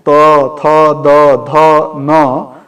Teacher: जिन वर्णों का उच्चारण स्थान दांत होता है